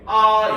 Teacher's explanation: 거성은 옆에 이제 점이 한 개 생기는 거야 알겠죠 이러면 높은 소리예요